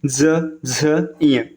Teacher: आप बोलेंगे ना तो आपके गले में कंपन आएगी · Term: सघोष व्यंजन